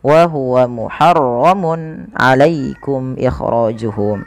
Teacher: ini harus dijelaskan suara tanwinnya karena adanya tanwin bertemu dengan huruf ain yang dimana ia termasuk daripada bacaan izhar halqi, maka harus dibaca dengan jelas.